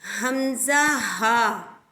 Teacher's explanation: حمزہ ہا اقصائے حلق یعنی حلق کا وہ حصہ جو سینے کی جانب ہے، اسے ہم حروف حلقی بھی کہتے ہیں.